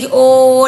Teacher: आगे देखो , हमने तुम्हें पहले ही बता दिया था कि तुम गले तक फंसे हो; अब हम आपको कंठोष्ठ के बारे में बताते हैं—कंठोष्ठ का अर्थ है गला और होंठ एक साथ, यानी ओ, औ, देखो, यह बाहर आ रहा है, इसलिए गले की ध्वनि निकल रही है और इसे होठों से बोला जा रहा है। इसलिए O, Au , इनमें कोई व्यंजन नहीं हैं।